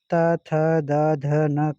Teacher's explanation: त थ द ध न का उच्चारण स्थान बताइए तो दंत हो जाएगा।